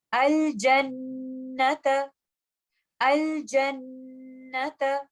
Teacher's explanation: ہم غنہ کو طویل ترین ٹائم کے لیے ہولڈ کریں گے۔ ہم اس کو اس طرح سے نہیں پڑھیں گے الجنت، کیونکہ یہاں پر میں نے اس کو موسٹ کمپلیٹ غنہ کا ٹائم نہیں دیا۔